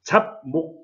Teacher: 잡목 이것도 마찬가지. 뒤에 미음 때문에 비읍은 미음으로 발음이 됩니다. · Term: 비음화